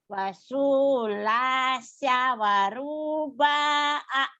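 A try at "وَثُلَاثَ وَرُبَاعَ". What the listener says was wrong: Sunya pendek. Su sama ba'nya pendek ya. Nih yang panjang nih saya lingkari ya.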